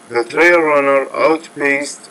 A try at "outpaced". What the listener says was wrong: You want to see the trail runner outpaced, put the stress on the second part of that word, not the first part.